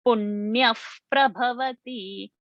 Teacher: So there the visarga became ha.